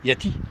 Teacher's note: On a tendance souvent à ne pas prononcer le L.